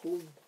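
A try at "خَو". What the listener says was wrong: Non, donc le waouh, il faut le dire. Ça fait khaou. Khaou, ouais. Et enfin, bon là tu peux le dire comme ça à l'oral. Khaou kha, mais bon, vu qu'on est dans le stade, on est au stade de l'apprentissage, on prononce tout.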